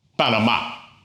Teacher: it ends in a vowel, but the stress is on the last syllable. So it needs an accent mark to tell us that.